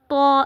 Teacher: इसका मखरज भी ता और दाल वाला है। जुबान की जो नोक है वो सनाया उलिया की जड़ से जब टकराती है तो वहां से त अदा होता है। लेकिन इसको हमने मोटा करके पढ़ना है।